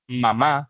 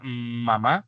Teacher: cuando hace el sonido M, usted junta los dos labios, y se llama bilabial porque usa los dos labios para pronunciar una palabra.